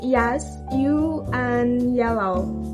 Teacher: These sounds are produced by raising the middle part of the tongue to the hard palate. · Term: palatal sounds